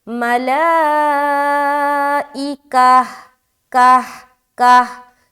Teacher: بعض اوقات لوگ کنفیوز ہو جاتے کہ تا پر جب بھی اسٹاپ کریں گے تو اس کو ہائے ساکینہ بنا دیں گے، تا پر نہیں، پورا لائن یہ ہے کہ گول تا پر، صرف تا نہیں کہنا ہے، گول تا پر جب وقف کریں گے تب ہائے ساکینہ بنائیں گے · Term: وقف بالابدال